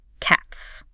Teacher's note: a word like cats that ends in a voiceless T sound gets a hiss.